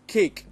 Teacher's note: the C Sound in cake that is it comes in the beginning so it's aspirated